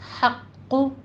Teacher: हक़्क़ु में हा बारीक है, क़ौफ़ के ऊपर तशदीद भी है, सख्ती से पढ़ेंगे, और इसको आपने पुर भी पढ़ना है। आखिर पे आपके होंठ गोल हो जाने चाहिए क्योंकि क़ौफ़ के ऊपर ज़म्मा भी है